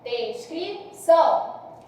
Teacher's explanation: O A é mais forte, logo o O vai ser mais fraco. Então, esse ditongo é um ditongo, foi do mais forte para o mais fraco, decrescente, oral nasal, descrição, são, nasalizou, nasal.